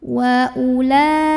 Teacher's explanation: U-nya baca pendek, waw-nya nggak usah dibaca.